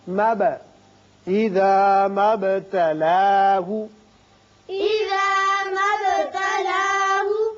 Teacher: با ساکن ہے، اس کی صفت قلقلہ ادا کریں گے، مد نہیں پڑھیں گے